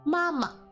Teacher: As you can see with mama, it starts with first tone, then neutral tone. So, mama. Not to be confused with going down to fourth tone.